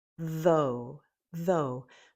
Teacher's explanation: The TH is voiced, the voice is on, followed by O.